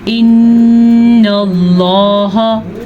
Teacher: نون کی شد ضرور ادا کرنی ہے اور نون کا غنہ